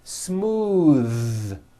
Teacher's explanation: Believe it or not, the TH sound in smooth is voiced.